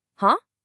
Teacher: That rising sound, that is the second tone.